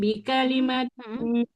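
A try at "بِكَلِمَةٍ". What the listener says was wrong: Kafnya jangan panjang.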